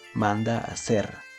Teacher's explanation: Aquí termina con la vocal A y empieza con la vocal A. La H en este caso pues no se tomaría en cuenta porque no se pronuncia, por lo tanto se juntan en una sinalefa y hacen una misma sílaba.